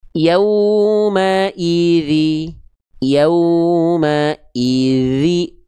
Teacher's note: huruf dzal itu di ujung lidah disentuhkan ke ujung gigi sari atas secara tipis-tipis dialirkan suaranya. Ya, sehingga ketika kita baca yauma idzi, yauma idzi, jadi ngalir suaranya.